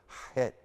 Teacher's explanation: Hear that right out of my back of my throat.